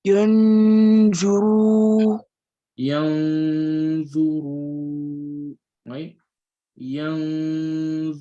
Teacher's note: So the ra is going to be elongated